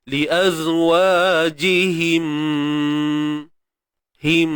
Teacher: kita tahu merujuk kepada mim yang datangnya daripada makhraj bibir mulut kita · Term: idgham syafawi